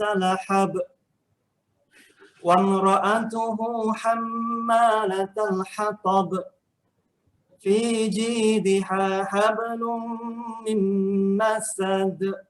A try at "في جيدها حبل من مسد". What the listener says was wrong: Bezakan ha bulat dengan ha pedas. Jadi ha bulat tu macam hampir-hampir ha pedas. Macam kena bezakan. Okey, contohnya fi jidiha hab. Fi jidiha. Bila kita sebut ha bulat, kita terus tolak daripada angin daripada dada. Fi jidiha hab. Kepit pada ha pedas saja. Hablum.